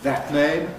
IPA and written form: ˌðæt ˈneɪm (that name)